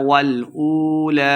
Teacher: واو مد ہے تو دو حرکات لمبا کر کے پڑھیں گے